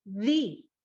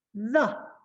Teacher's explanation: We're gonna change it to a schwa sound and say THA.